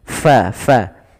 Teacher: alirkan nafasnya fa fa Jangan dibaca Pa